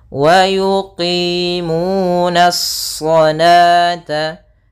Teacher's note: Nah, alif lam di sini alif lam syamsiyah, yaitu alif yang ditulis tapi tidak dibaca. Langsung kepada huruf shad yang tebal. Hati-hati, nanya tetap tipis, shadnya memang tebal.